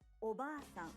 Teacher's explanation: The a in ba is held for 2 claps. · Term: long vowel